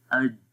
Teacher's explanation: پہلا ہے جیم، تو جیم جب ہم پڑھیں گے تو غور کریں گے کہ جیم کے اندر زبان کا درمیان والا حصہ تالو کے درمیان والے حصے کے ساتھ بالکل ٹچ ہو جاتا ہے، اور جب ہم اس کی آواز پڑھتے ہیں تو آواز آئے گی اج، ٹھیک ہے۔